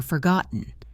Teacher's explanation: Forgotten used the glottal stop for forgotten.